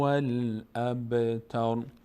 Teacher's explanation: اینجا را ساکن میشه، در هنگام توقف تر میشه